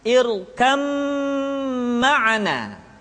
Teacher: disertai dengan gunah ditahan tidak boleh tergesa-gesa